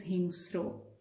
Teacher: there is no vowel in between because this is a consonant cluster so s and r are joined together